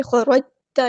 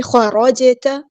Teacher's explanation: حیث خرجت، خا اور را ہمارا یہاں پہ ہیوی لیٹر ہے، پورا ادا کریں گے، موٹا پڑھیں گے، اور جیم ساکن کو ہم یہاں پہ ہلائیں گے، کلکلا ہو رہا ہے، ہم اس طرح نہیں پڑھ سکتے، اسے خرجتا نہیں، خراج اس طرح ہلائیں گے، خراجت۔